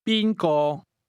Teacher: The tones in who or whom go from the high level to the mid level.